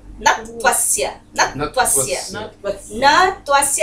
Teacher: न तो ह्रस्व है, उसमें कोई आपको दीर्घता नहीं दिखाई दे रही है, त्वा उसके आगे है, संयुक्त वर्ण है, तो जब बोला जाएगा, उच्चारण किया जाएगा तो न पर स्ट्रेस देंगे